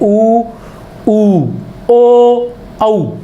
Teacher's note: इनके उच्चारण में ओष्ठ जो होते हैं वो वृत्ताकार हो जाते हैं।